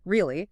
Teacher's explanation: with my voice going up high at the end. Sounds like surprise.